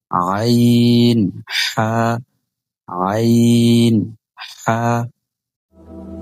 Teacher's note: এই দুইটা হরফ হলকের মধ্যবর্তী স্থান থেকে উচ্চারিত হবে।